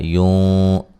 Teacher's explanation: ہم، میم ساکن کا اظہار ہے۔ یوں، نون ساکن کا موٹا اخفا ہے